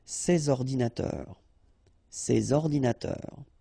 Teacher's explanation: you should make the liaison between S and O